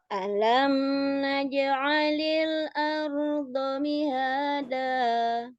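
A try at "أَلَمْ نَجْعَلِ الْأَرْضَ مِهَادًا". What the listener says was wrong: Hati-hati, alamnya jangan sampai terlalu mendengung. Alam naj'alil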